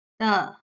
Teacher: you can hear the sound without any ups and downs or transitions just a sound that stops quickly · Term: neutral tone